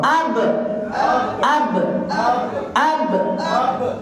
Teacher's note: Bibir rapat. Dia tak campur gigi.